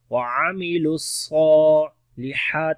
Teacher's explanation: ہا کو گلے کے درمیان والے حصے سے پڑھیں گے اور لمبا بھی کریں گے